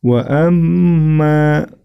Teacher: mim tasydid nya bacaan ghunnah sama seperti sebelumnya ditahan dan diperpanjang